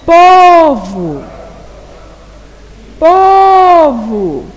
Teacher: É a sílaba po. Então, na palavra povo, a sílaba tônica é a sílaba po, porque é a sílaba que eu pronuncio com mais intensidade. Logo, a sílaba vo é a sílaba átona, porque é a que eu pronuncio com menos intensidade.